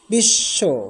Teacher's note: যেমন বিশ্ব তালব্য সর নিচে বফলা রয়েছে। তালব্য স দুইবার উচ্চারিত হবে। অর্থাৎ দীপ্ত হবে।